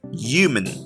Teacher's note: in New York accents, the H is dropped, and we're left only with U. So the word human begins with a U sound, so it becomes human.